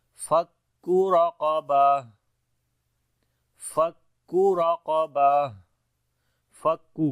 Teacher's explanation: کاف کو باریک پڑھیں گے، را اور قاف دونوں کو موٹا پڑھیں گے